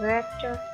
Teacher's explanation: टा का साउंड हमने इतना ज़्यादा ऑडिबल नहीं रखा